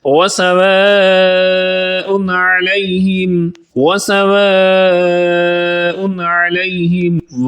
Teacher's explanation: واو کو اس لیے لمبا کر رہے ہیں کہ اس کے بعد مد ہے جس کا نام مد متصل ہے۔